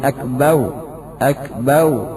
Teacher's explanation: Selanjutnya mengganti ra dengan waw. Akbar menjadi akbau, akbau, seperti orang yang lisannya tidak bisa mengucapkan ra, akan tapi a.